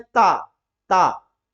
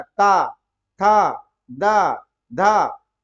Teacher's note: जीभ जो है दांत को ठोकर मारती है बाहर निकलने के लिए। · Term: दंत वर्ण